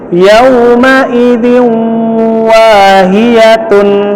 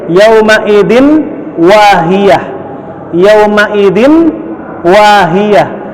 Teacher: Dzin kasra tanwin ketemu dengan wa, maka masuknya ke huruf waw, jadinya yauma idzin, ditahan, yauma idzin wahiyah. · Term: idgham bi gunnah